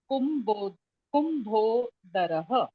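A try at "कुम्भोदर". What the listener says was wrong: Kumbhodara. Okay. In English, you have to stop without the visarga.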